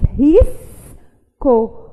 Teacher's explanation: Só que a gente não diz risso, a gente diz risco. O som do S é pronunciado na sílaba anterior e o som do C é pronunciado na sílaba posterior. Então, se o S teve o som independente pronunciado e o C também teve o som independente pronunciado, não faz sentido eu dizer que há dígrafo nessa palavra.